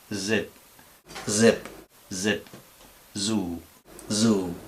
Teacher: Bien, en la Z tenemos este sonido, que es una S sonora, que consiste simplemente en pronunciar una S y hacer vibrar las cuerdas vocales